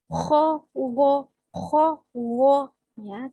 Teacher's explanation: Kho tempatnya ada di ujung tenggorokan bersama dengan ghoin